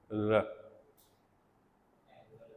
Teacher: Yes, alveolar, tip of tongue and alveolar ridge.